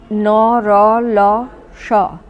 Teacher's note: দাঁতের গোড়ায় ঠেকানোর ফলে উচ্চারিত ধ্বনি হলো দন্তমূলীয় ধ্বনি